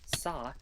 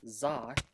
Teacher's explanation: In some consonants, like in sa, you don't vibrate your vocal cords or vocalize when you pronounce them, but in others, like za, you do. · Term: vocal cords vibrating